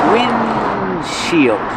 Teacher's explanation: But you don't really hear the D because it's a stop D.